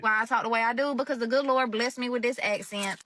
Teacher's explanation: the vowels are pronounced kind of long and sound like they're split into two syllables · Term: Southern drool